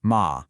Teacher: A little dip and rise.